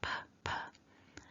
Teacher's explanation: where the lips are together, and then we release the sound by letting the lips come apart a little bit, and then we have a puff of air leaving the mouth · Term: p sound